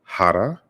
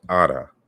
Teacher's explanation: corresponds to Zande Hara, field, and Ara, field. So the H is dropped.